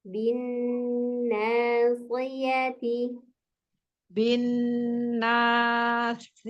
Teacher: Bin tasdidnya dengung